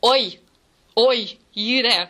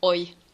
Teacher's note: That's a diphthong, because you start with an O and then it turns into e,